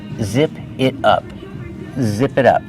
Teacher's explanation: The T changes to a fast D.